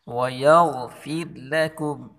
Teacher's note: اس غین کو پر پڑھیں گے اور اس را کو باریک پڑھیں گے